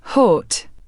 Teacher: O sounds hot or hut in British English. The short O in words like hot, pot, and lot is pronounced with rounded lips.